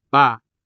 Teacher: If you place your palm in front of your mouth and aspirate these consonants, such as by saying ba, you would feel air being pushed against your palm. Whereas when you do not aspirate these consonants, like by saying ba, there is never any air bumping against your palm